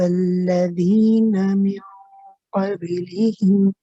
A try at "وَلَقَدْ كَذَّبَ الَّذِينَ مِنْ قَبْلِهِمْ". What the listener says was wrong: What we do is, for the dal, be careful that you don't don't smile too much when you say the qalqala. Keep your mouth relaxed. وَلَقَدْ كَذَّبَ الَّذِينَ مِنْ قَبْلِهِمْ. MashaAllah, your ikhfa is very nice. The dal is a little bit airy, the first one. The second one is actually okay. It's more the first one, say kadha, right?